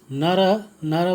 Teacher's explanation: नर बोलने से र के अंत में अ की ध्वनि, अ स्वर का उच्चारण होता है।